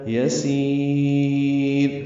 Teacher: یسیر، سی آئے مدہ ہے اور را ساکن ہے، وقفاً مد عارض سکون ہے. یسیر، سین کو لمبا کر دیں گے، را باریک پڑھیں گے